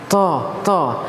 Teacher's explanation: ketika mengucapkan huruf tho tidak boleh ada hembusan angin